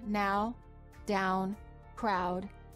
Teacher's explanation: ow as in house for the ow sound the lips are not rounded but as you move toward the second part the u the lips begin to close and become more tense the tongue moves from a relaxed low position to a high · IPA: aʊ